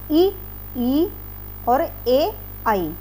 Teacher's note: जिन स्वरों के उच्चारण में जीभ का अग्र भाग ऊपर उठता है वे अग्र स्वर कहलाते हैं